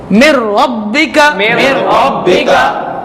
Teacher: با حروف کلکلہ ہے ذرا جماؤ کے ساتھ